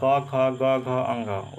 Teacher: अगर आपसे पूछता कि क वर्ग में जो वर्ण आता है, जैसे क ख ग घ अंग, उसका उच्चारण स्थान कंठ हो जाएगा